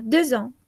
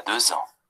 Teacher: Se unen la X con la A.